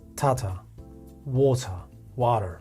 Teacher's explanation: the first syllable is getting all the energy so when you see something like that it means I'm getting